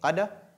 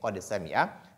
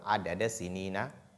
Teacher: On lit la lettre dal de façon distincte, donc on dit qad, et on lit sin aussi de façon distincte, on dit qad sami'a.